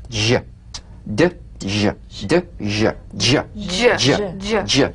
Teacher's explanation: It's a combination of the D drum beat and the z. So place the tongue on the upper gum ridge for the d. Then let the tip peel down for the z resonance. J dj dj. Use a light quick energetic staccato treatment and feel a voiced percussive sensation flowing from the hard pallet onto the gum ridge.